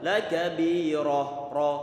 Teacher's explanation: Ra ini di saat dia difathahkan maka dia tebal. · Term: ra tebal